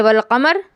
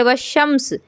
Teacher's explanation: اس میں لام کو نہیں پڑھا جا رہا ہے لیکن لکھا ہوا تو ہے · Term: حروف شمسیہ